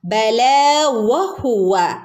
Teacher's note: വഹുവ എന്ന് പറയുമ്പോൾ ചുണ്ട് കൂർപ്പിച്ചു പിടിച്ചിട്ട് വേണം നമ്മൾ വ ഉച്ചരിക്കാൻ